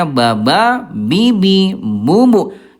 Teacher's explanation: huruf ba dia jahra ya bunda, tidak ada udara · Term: jahar